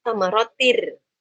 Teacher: Tanwin ya bunyi nun sukun di sana bertemu dengan ro. Masukin nun sukunnya ke ro. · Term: idgham bila gunnah